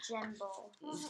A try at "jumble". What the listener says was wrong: That would say jumble.